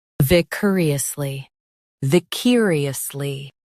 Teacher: Stress cur and keep it quick.